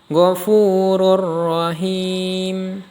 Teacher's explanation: Cara membacanya dibaca lebur tanpa dengung. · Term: idgham bila gunah